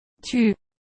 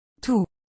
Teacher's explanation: with U, your tongue will be out further than with OU.